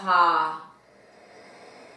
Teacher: sinuses as if there's a swirling of air at that base air comes through the back of the throat there's a dilation of the glottis and it feels as it for creating space in the back